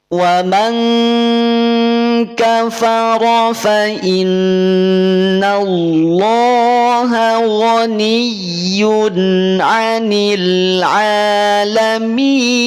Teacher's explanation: ada nun bertasydid maka tahan dulu, jangan terburu-buru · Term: gunnah musyaddadah